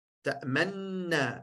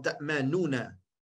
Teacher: Die nuna wordt één na met een shadda. Ta'manna. In plaats van ta'manuna. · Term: idgam al-kabir